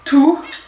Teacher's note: Le T est une dentale, donc la langue vient contre les dents pour faire le son. Tout, et sur le T, vous remettez un tout petit peu d'abdominaux.